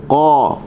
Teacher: huruf qaf kita just buka mulut, pangkal lidah terangkat.